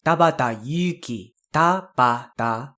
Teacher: Main thing to note is to make sure that you pronounce the Tabata, all of those syllables with exactly the same amount of stress.